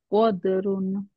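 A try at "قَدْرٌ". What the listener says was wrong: Good.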